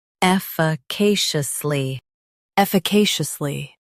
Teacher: Stress K and keep shush soft.